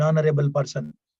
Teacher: now they begin with H but your articulation begins from A you see articulation begins from A E so Ha.